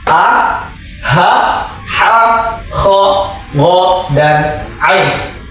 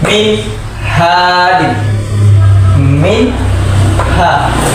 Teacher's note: tidak ada dengung antara nun sukun dan ha. Min ha jelas, huruf ha nya jelas. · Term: izhar